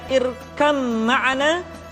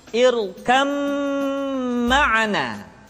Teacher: leburnya huruf ba mati ke dalam huruf mim yang terdapat di dalam suratud ayat 42 ayatnya berbunyi irkab makna